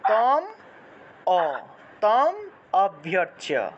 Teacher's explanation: ম উচ্চারণ করলে অটোমেটিক্যালি একটা অ আসে